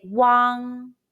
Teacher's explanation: When you see the English letter UANG in Pinyin, the pronunciation is WANG. WANG is a combination of U and ANG sounds. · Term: final WANG